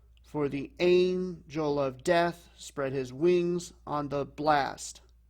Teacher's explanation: in anapestic, it's going to be unstressed, unstressed, stressed.